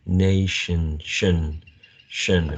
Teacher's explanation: Pay attention to the sh consonant sound, also the schwa sound here as the last vowel sound in this word. Nation, shin, shin, very, very mid-central, very lax sound.